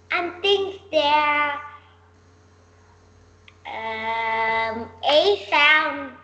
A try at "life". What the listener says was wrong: If you put it here, it will become life. Lave. So that means we will put in the I sound. Life, I.